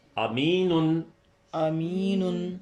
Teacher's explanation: پہلی الف معروف کی آدھی آواز ہے، دوسری یائے معروف کی پوری آواز ہے، اور آخری نون میں تنوین ہے.